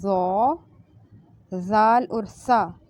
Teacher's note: حروف لثویہ جو زبان کی نوک سے ادا ہوتے ہیں، اور اوپر والے جو ثنایا ہیں، جو دو دانت ہیں، ان کے کناروں سے ٹچ کرے گی زبان، تو یہ حروف ادا ہوتے ہیں۔